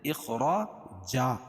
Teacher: اخرا، الف سے پہلے زبر ہو تو الف مدہ، اور را کے اوپر زبر ہے تو را کو پر پڑھیں گے، اور دو زبر کی تنوین پر وقفے کی صورت میں ایک زبر کے قائم مقام الف لائیں گے، الف کو پڑھیں گے، اور دوسری زبر اپنی حالت پر باقی رہے گی، جیسے اخراجن سے اخراجا، جا جب بولتے ہیں تو الف سے پہلے میم کے اوپر زبر باقی رہتی، دو زبر نہیں۔